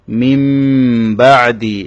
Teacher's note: এখানে হচ্ছে ইকলাব, অর্থাৎ নুন সাকিনের পরে বা এসেছে, ইকলাবের হরফ হচ্ছে একটি, সেটি হচ্ছে বা। নুন সাকিন এবং তানউইনের পরে যদি বা আসে তখন নুন সাকিন এবং তানউইনটাকে একটা মিম দিয়ে পরিবর্তন করে দেবে।